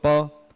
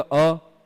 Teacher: प बोलते समय प में इतना जोर नहीं लग रहा है कंठ में, लेकिन अ में लग रहा है